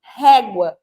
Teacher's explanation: elefante tem o som ali mais fechado e temos o régua o som mais aberto do e